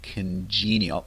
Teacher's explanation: Pay attention to the stress pattern there with stress on the second part